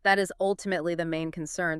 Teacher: The pitch drops. It says end of point. I am certain. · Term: falling tone